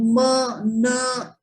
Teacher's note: the nasal sounds like ma, na, which produced through the nose, produced in the nasal area